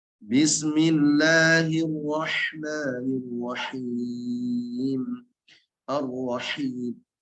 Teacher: pastikan ketika baca basmalah nanti betul-betul ha-nya tipis